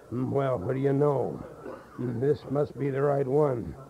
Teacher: Now, you see, what we're doing here, we got some restriction in the back of our throat, and your diaphragm pressure, and your mid-range nasal, and it's very breathy.